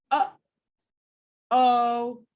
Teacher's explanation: it has two glottals one at the beginning uh before the actual vowel and then we release it